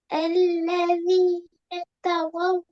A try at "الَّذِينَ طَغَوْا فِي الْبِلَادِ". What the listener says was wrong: த அல்ல، طا طا. الذين طغوا في البلاد.